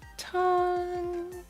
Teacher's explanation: The first tone is a flat tone. Let's pronounce the first tone in a higher pitch and make it flat.